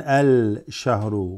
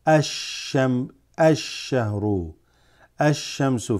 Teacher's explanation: Shamsiyya is when you assimilate. You don't read the al, but the first sound will be assimilated into wherever the shadda is over. So ash-shahru, ash-shamsu for example. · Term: huruf shamsiyya